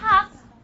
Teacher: There's no vibration in my vocal folds when I try to pronounce ha. So this is a voiceless sound.